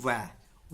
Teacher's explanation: दंतोष्ठीय, ऊपर के दांत वे निचले होठों से, जैसे वह को बोलते हैं ऊपर के दांत और निचले होठ की सहायता की आवश्यकता पड़ती है